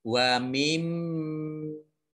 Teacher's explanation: Mim tasdid itu dibaca gunnah atau mendengung dan ditekan selama 2 harokat. Wa mimma, jadi ini mimnya dibaca mendengung atau gunnah, ditekan 2 harokat.